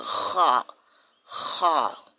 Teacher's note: C'est tout comme vous voulez prononcer ha, mais vous allez racler la gorge. Ici, kha, kha.